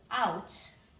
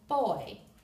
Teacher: two vowel sounds joined in one syllable to form one sound so here we have O and U they're two letters two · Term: dip thong